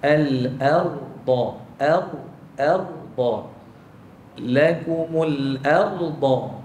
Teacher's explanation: dekat kalimah al-ardha, huruf ra tu bagi tebal lagi